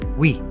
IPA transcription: wi